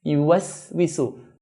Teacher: Do not make a sad sound by making the sin heavy.